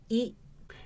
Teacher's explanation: when you pronounce this sound your tongue is positioned at a higher level on the vertical dimension and at a front position on the front to back dimension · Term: high front vowel